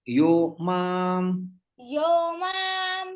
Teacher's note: सततम सततम सततम यह यह यह यह मा माम माम माम यहां पर जो है संधि हो जाती है यह का विसर्ग ओ में परिवर्तित हो जाता है